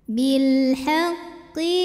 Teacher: maka lam sukun ini kita bunyikan dengan jelas atau disebut dengan izhar qamari